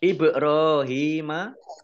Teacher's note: ba sukun bacaan kolkolah dibaca memantul.